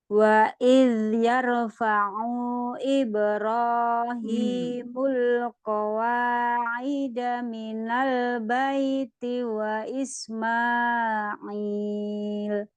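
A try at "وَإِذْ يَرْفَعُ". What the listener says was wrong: Wa idh yarfa'u. Fa'unya jangan panjang, tidak ada matnya. Yarfa'u Ibro.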